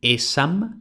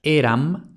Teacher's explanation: Sabemos que en el siglo ates de Cristo se había consumado el rotacismo en latín, es decir, una s intervocálica, es decir, vocal s vocal, se convertía en ere. Así de un original esam tendremos eram de donde viene el actual yo era.